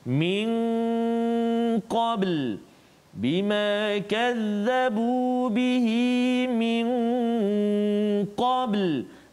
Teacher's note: nun mati bertemu dengan qaf, dengung 2 harakat